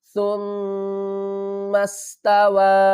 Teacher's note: سین کو جب ہم پڑھیں گے تو آواز آئے گی سیٹی کی